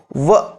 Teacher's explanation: ದಂತವನ್ನು ಬಳಸಕೊಬೇಕಾ ತುಟಿಯನ್ನು ಓಷ್ಟವನ್ನು ಬಳಸಕೊಬೇಕಾ ಅಂತದ್ದು ಯಾವುದು ಅಂತಂದ್ರೆ ವ ಅಂದ್ರೆ ಒಂದ್ಸಲಿ ವ ಅಂದಾಗ ಹಲ್ಲು ಮತ್ತು ತುಟಿ ಎರಡು ಕೂಡ ಬಳಕೆ ಆಗುವಂತಹದ್ದು ಹಾಗಾಗಿ ವ ಇದು ದಂತೋಷ್ಟಕ್ಕೆ ದಂತೋಷ್ಟಕ್ಕೆ ಉದಾಹರಣೆಯಾಗಿ ನಿಂತುಕೊಳ್ಳುತ್ತದೆ ದಂತೋಷ್ಟಕ್ಕೆ ಯಾವುದು ಅಂತಂದ್ರೆ ವ